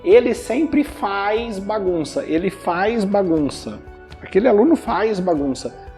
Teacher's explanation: esse Z a gente coloca um I ali na pronúncia